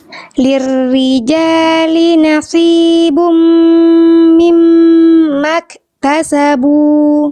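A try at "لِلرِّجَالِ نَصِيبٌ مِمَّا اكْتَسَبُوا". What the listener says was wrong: Saya yakin shotnya bisa lebih tebal. Naslibum mimma dan seterusnya ya. Diulang shotnya, rasakan lidahnya dalamnya diangkat lagi. Kais, isti'la, sifat isti'la, pangkal lidah naiknya dikuatkan lagi.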